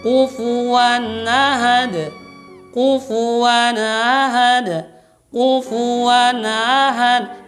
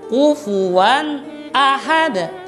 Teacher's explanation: Tidak boleh huruf a-nya atau fathahnya tadi ditashil, disamarkan, tidak boleh.